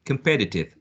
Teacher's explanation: has four syllables and the second one carries the stress or the second one is the most prominent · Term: stressed syllable